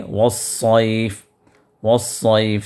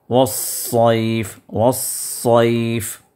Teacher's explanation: تو لہذا صاد کے ساؤنڈ سے آپ ادا کیجیے والصیف والصیف. سین جو آپ ادا کرتے ہیں تو اسی میں تھوڑا سا پریشر دیجیے، اسی میں تھوڑا سا اس کو پریشر دے کے اس کو آواز کو موٹی کیجیے